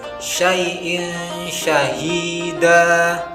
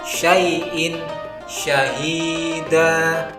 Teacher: Dalam lafaz tersebut terdapat huruf hamzah berharokat kasrotain bertemu dengan huruf shin, maka Bunyi tanwin dibaca dengan samar dan mendengung mendekati huruf shin. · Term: hukum ikhfa